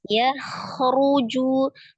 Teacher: hati-hati di kho-nya tidak dipantulkan, cuma dialirkan ya. Ya khuruju, bukan ya khuruju, tidak dipantulkan ya.